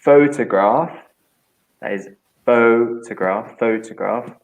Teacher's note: stress on the first syllable photograph and photographer photographer and moves to the second so the